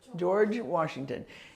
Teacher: George in in English this is more a j sound it's not so much cha as it is George